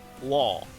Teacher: I can hear the l sound a little bit but it seems like you're you're trailing off near the end